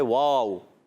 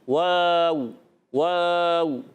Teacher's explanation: ایک انگلش کا واو ہوتا ہے واو، واو مجہول ہوتا ہے، اور ایک عربی کا واو تو یہ معروف ہوتا ہے